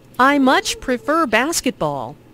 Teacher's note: Notice how much is stressed to show that the speaker really likes basketball.